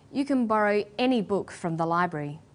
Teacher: When the word any is stressed, this tells us that we're talking about an unrestricted quantity or unlimited choice.